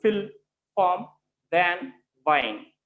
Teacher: these two sounds are articulated at lip and teeth, they are produced with the help of lip and teeth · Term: labiodental sounds